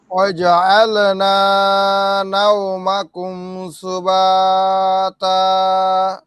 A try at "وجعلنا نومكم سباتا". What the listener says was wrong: হ্যাঁ ওয়াজা আলা, এখানে আলটা একবার স্পষ্ট, ওয়াজা আল আলা, এরকম, এটা তো কলকলা না ভাই। ওয়াজা আল না, ওয়াজা আল না, আবার বলেন তো।